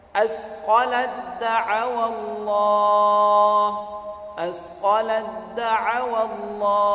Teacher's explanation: Ta sukun bertemu dengan da, makharijul hurufnya sama tetapi sifatnya tidak sama. Ini disebut dengan idgham mutajanisain.